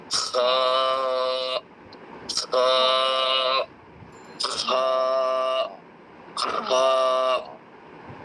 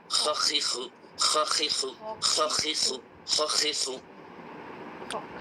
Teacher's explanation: ঠিক আছে, তাহলে এই অক্ষরটির মাখরাজ হচ্ছে কণ্ঠনালীর শেষ ভাগ। কণ্ঠনালীর শেষ হতে একটি খড়খড়ে রকমের আওয়াজ বের করে এই অক্ষরটি উচ্চারণ করতে হয়। যেমন মাছের কাঁটা যখন গলায় বিঁধে যায়, এই মাছের কাঁটা আমরা যখন গলা থেকে বের করতে চাই আমরা একটি আওয়াজ করি, এরকম আমরা আওয়াজ করি।